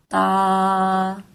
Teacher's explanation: تا بھی دو حرف کو ملا کے بنتا ہے تو اس کو ہم ادا کریں گے تا. زبان کی نوک کو سامنے والے دونوں دانتوں کی جڑوں سے لگاتے ہوئے یہ ادا ہوگا